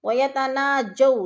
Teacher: وولین کو لمبا بھی نہیں کرنا اور جھٹکا بھی نہیں دینا